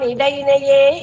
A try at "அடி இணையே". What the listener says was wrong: இடையினையேன்னு சொல்றேன், அடி இணையேன்னு பிரிச்சுக்கோங்க அந்த இடத்துல. அடினா பாதம், இணைனா பேர், ரெண்டு பாதம் இருக்கு இல்லையா, இணைகள், அதனால ரெண்டு.